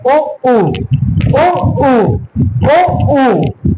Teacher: ओठ कैसे हो रहा है? गोल हो रहा है, तो ये कैसी ध्वनि है आपकी? ओष्ठ ध्वनि।